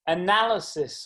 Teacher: four syllables second syllable carries the stress